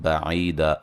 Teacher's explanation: واد کو موٹا ادا کریں گے، لام پہ مد اصلی ہے، یہاں نون تنوین کا اقلاب ہے، غنہ کریں گے، نون کو میم سے بدل دیں گے